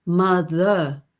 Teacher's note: most pop singers now don't sing that r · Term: the soft r